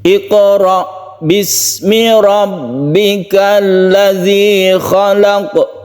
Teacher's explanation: qaf ini adalah qalqalah sugro karena berada di tengah kata, di tengah ayat